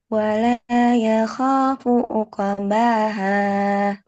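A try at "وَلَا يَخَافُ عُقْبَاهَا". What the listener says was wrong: Nah, ini apa? Qofnya masih uqbaha. Uq uqoba coba.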